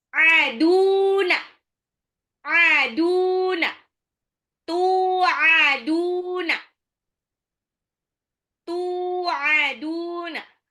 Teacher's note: Jadi taknya ketemu sama waw, ya, dia panjang, matobi'i.